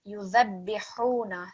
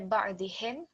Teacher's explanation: Just over here with the ha, again, it's a little bit tricky to produce from your throat, but it's a sharp ha, and we want to differentiate it with the softer ha